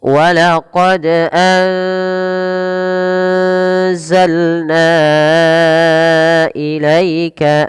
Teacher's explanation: Pada kata na, kita harus memanjangkannya sebanyak empat atau lima harakat. Mengapa? Karena ini adalah bacaan, kami menyebutnya mad jaiz munfasil.